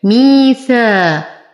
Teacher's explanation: يا ساكنة ما قبلها مكسور فهو من الطبيعي حركتين